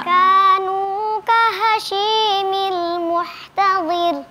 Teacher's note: Coba perhatikan huruf ta jangan ikut tebal.